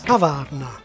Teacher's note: like almost all Czech words, it's stressed on the first syllable. So the acute accent indicates not stress, but vowel length, kavárna.